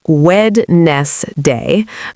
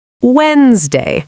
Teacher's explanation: Many learners say Wednesday, but the correct pronunciation is closer to Wednesday, where we do not clearly pronounce the D